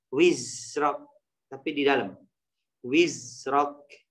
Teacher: Desis suara, bukan nafas. Jadi suaranya wizrok adanya di dalam, tidak dikeluarin, ya. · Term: sifat desis